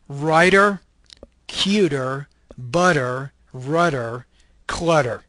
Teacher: the flap flap is American English not British English it's it's when you have the T in the middle of · This is an alveolar, stop voice consonant.